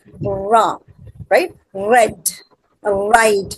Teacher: The ra sound in red and right is formed with the tongue tip raised and curled back near the alveolar ridge.